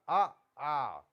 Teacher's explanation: अ और आ का उच्चारण स्थान कंठ है सीधा अ आ सीधी आवाज आपकी कंठ से निकल रही है